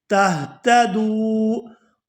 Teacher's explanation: یہاں دال کو واو ساکن کے ساتھ ملائیں گے تو کھینچ کر ادا کریں گے